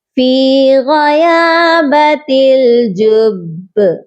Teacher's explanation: آپ نے پہلے اپنے ہونٹوں کو سختی سے جوائن کرنا ہے پھر قلقلہ کرنا ہے